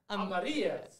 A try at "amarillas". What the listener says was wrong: Yeah, but pronounce the R. Amarillas. Amarillas. Amarillas.